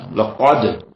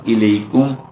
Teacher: قاف جو ہے یہ پر پڑھا جانے والا لقد، اور اس کے مقابلے میں دوسرا کاف الیکم وہ سادہ پڑھا جائے گا